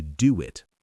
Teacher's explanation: our mouth naturally makes a W shape. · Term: secret W